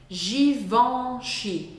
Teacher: som nasal que é o som on om é um som diferente do som an do português